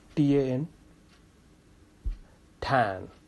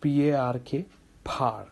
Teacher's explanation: I'm telling aspiration is additional puff of air on the stressed syllable.